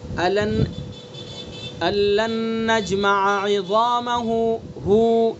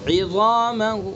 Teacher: وقف بالروم کی صورت میں یہ صلہ ختم ہوگا اور حرکت کا تہائی حصہ ادا کیا جائے گا